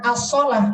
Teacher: lamnya dia tidak terucap langsung loncat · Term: alif lam syamsiah